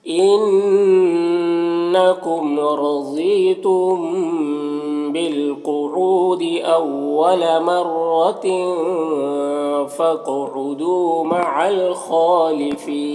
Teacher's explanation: خا حروف مستعلیہ میں سے پر پڑھیں گے، کھڑا زبر ہے، ایک الف برابر کھینچیں گے، اور یہاں پر وقف کی صورت میں مد عارض وقفی ہوگا تو اس طرح سے پڑھیں گے۔